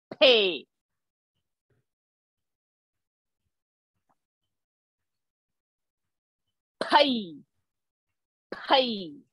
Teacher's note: Pay is the sound, not fay. Not fay. Closing the lips.